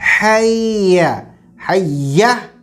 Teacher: حیا جو حلق کے درمیانی حصے سے ادا ہوگا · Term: ہا